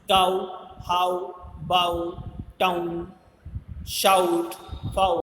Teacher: First you have to speak a, then u continuously and simultaneously. It is called glides. Sound glides from a to u.